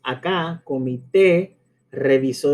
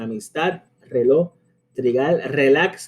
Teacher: llevan el peso del acento prosódico en la última sílaba de la palabra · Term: palabras agudas